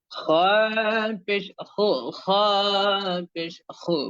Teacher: খ অক্ষরটির উচ্চারণ করার সময় আপনার জিহ্বার গোড়াটা কিছুটা উপরের দিকে উঠিয়ে দেওয়ার ট্রাই করবেন তার পাশাপাশি আপনার মুখে যাতে একটা মলিনতা অথবা বিষন্নতার ছাপ থাকে · দুই ঠোঁট খুব বেশি সম্প্রসারিত হবেই না, সংকীর্ণ হবে, সংকুচিত হবে, কিছুটা জড়সড় হয়ে থাকবে, তবে অনেকটা নয়, স্বাভাবিকের থেকে হালকা একটুখানি।